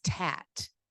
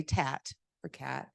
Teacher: So cat becomes tat. So the k and the t sound are made the exact same way, in the exact same manner. They both do not have voicing. So k, t is the same thing, but the one is made in the back and one is made in the forward.